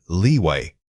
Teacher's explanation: When you hit that long e sound in leeway, ensure your lips are fully spread. This sustained tension helps differentiate it from the short vowel.